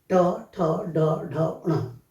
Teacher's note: जो जीभ ऊपर के तालु से टकरा करके उच्चारण करती है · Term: मूर्धन्य